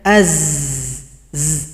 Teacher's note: saofir itu artinya ada suara yang tajam seperti bersiul